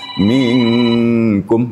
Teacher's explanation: nun mati diikhfakan ke dalam huruf Kaf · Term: ikhfa Hakiki